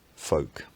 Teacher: the first element of the diphthong moves forward in the mouth